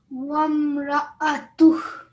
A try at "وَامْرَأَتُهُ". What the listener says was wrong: Good, well done. You made sure that you combined your vowel and your meme.